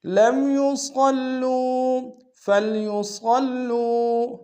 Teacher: صاد کو موٹا ادا کریں گے، لام کے اوپر شدہ زور دیں گے، واو مد ہے، 1 دار میں کھینچیں گے۔